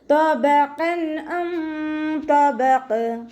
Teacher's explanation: തബഖ, ഇവിടെ ഇസ്തിഅലാൻ്റെ ലെറ്ററാണ്, തഫ്ഹീം ചെയ്യുക. ഇത്ബാഖിൻ്റെ ലെറ്ററും കൂടി ആയതുകൊണ്ട് നാവിൻ്റെ ബാക്ക് നല്ലോണം മുകളിലേക്ക് ഉയർത്തി കൊടുക്കുക.